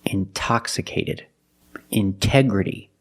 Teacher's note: We have the stress after the NT. We pronounce the T like a pure T. T. Release the sound.